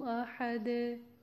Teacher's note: دال ساکن کر رہے ہیں تو ہم قلقلہ کریں گے ادھر